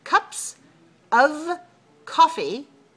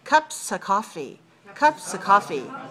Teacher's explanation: we don't pronounce the V in relaxed spoken English